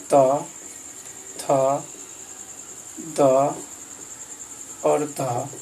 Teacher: और दंत में आ जाएगा त, थ, द और ध, ये चारों हो जाएगा दंत